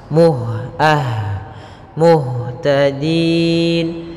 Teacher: sifat hamasnya ada mengalirnya nafas